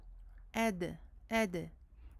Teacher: Non, il faut faire jongler cette lettre, ce qui veut dire en fait que nous touchons le point de sortie de la lettre et nous le lâchons aussitôt. Nous touchons le bout de la langue avec le palais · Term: qalqala